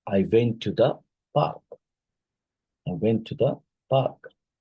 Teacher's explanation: downward drop at the end to show completion